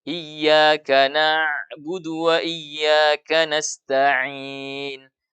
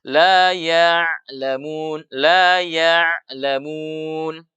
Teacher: Ya, jadi kita membaca ain itu dia bukan syiddah yang tertahan full, dia juga bukan rakhawa yang mengalir full. Ain ini ya tawassut. Ya, dia akan mengalir sebagian dan tertahan sebagian.